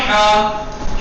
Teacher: درمیانے حلق سے ہی، وہی حلق میں ایک طرح کی گرفتگی، جکڑن سے ادا ہوگا، جیسے کسی چھلکے کو کھاتے وقت، بیج کو کھاتے وقت چھلکا پھنس جاتا ہے تو آدمی ایسے کرتا ہے۔